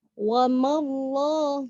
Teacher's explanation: takhallus jika mad tabi'i diikuti al, maka tidak boleh dibaca panjang. Wama Allah nggak boleh, harus dibuang alif itu.